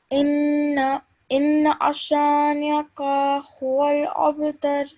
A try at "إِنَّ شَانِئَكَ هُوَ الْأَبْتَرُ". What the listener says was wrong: Okay, just practice this one more time because just need to apply the rule of ghunna and also simple fatha, so we're not elongating more than this fatha. Okay, just remember over here, don't stretch it more than 1 second. It's a simple fatha.